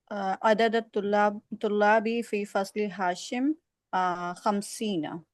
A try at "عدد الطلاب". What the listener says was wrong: عدد الطلابی نہیں، زبر لانے کی کوئی وجہ نہیں ہے، عدد الطلابی.